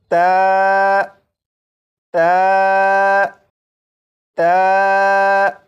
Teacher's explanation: ता को पढ़ने के लिए ज़बान की नोक को ऊपर सामने के 2 दांतों की जड़ से लगाकर जब पढ़ेंगे तो ये हर्फ ता बिल्कुल सही पढ़ा जाएगा